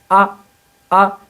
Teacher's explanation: الف کا مخرج جوف دہن یعنی منہ کا خلا، یعنی منہ کا خالی حصہ۔ آ بول کر دیکھیں آپ، یہ جو الف ہے یہ منہ کے خالی حصے سے نکل رہا ہے۔